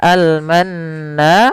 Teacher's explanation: Sama di sini kita namakan dengan alif lam qamariah. Yaitu alif lam yang kita tulis dan kita baca dengan jelas suara lamnya